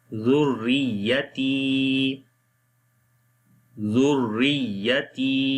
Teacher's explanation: Ta connect with the ya, due to ya madda we long here.